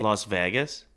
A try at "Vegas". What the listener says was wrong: You say VAG. instead of Vegas. You say a couple things different than other people. You inflect some letters different than others.